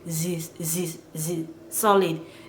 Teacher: saying THE and then solid, but that THE you hear it as z like a zebra